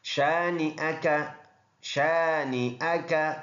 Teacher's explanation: نون کے اوپر شد آیا ہے تو یہ نون مشدد کہلاتا ہے، سختی کے ساتھ ادا کرنا، اور اس میں ناک میں آواز لے کے جائیں گے ایک الف کی مقدار کے برابر، یعنی 1 سے 2 سیکنڈ کے برابر۔